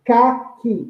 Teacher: Então, sílaba tônica aí é o ca